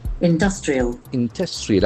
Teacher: Industrial, accent falls on the second syllable.